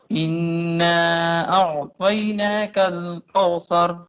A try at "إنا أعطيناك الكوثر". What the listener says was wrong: کو کاف واو زبر کو نہیں کو. ہاں کو جو ہے نا کوثر، یہ اردو کا لفظ ہے، اردو نہیں پڑھنی، ہم نے عربی پڑھنی ہے. کوثر کوثر کاف باریک رکھو. کوثر. اعطیناک الکوثر اعطیناک الکوثر اعطیناک الکوثر. دونوں کاف باریک ہیں، دونوں کاف باریک ہیں. انا اعطیناک الکوثر.